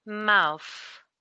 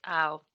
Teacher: the vowel sound is going to be a diphthong in the middle which is ow